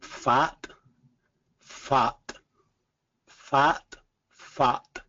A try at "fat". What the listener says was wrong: A little bit more jaw drop with that.